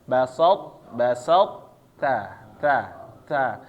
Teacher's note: mengeluarkan huruf to dari makhraj tanpa dikolkolahkan, jadi kolkolahnya hilang ya Bapak-bapak. Kemudian menurunkan pangkal lidah untuk menyebutkan huruf ta yang dikeluarkan dengan sifat hamas. Jadi tersisa dia ketika mengucapkan huruf to-nya ini Bapak-bapak, tebalnya. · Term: idgham naqis